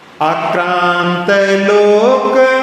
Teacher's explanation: तालव्य शा का उच्चारण करने के लिए जिह्वा को दांतों के पीछे ऊपर और मूर्धन्य के लिए और ऊपर ले जाना पड़ता है, तब वो शा का उच्चारण होता है।